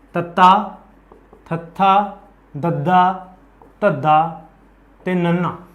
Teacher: जो आपां इन्हां दा उच्चारण करांगे उदों आपां नोट करांगे जिभ है जिहड़ी दंदां दे अंदरले पासे टच करदी है